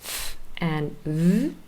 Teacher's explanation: they're formed by the top teeth, our top teeth, touching our bottom lip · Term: labiodental